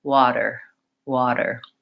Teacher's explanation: I just lightly touch my tongue up, I don't seal off the air, and then I release. · the flap T is very light so my voice is on like with a D